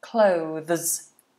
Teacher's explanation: washing the dishes we would just say cloths cloths so different to clothes because clothes is voiced but the same positions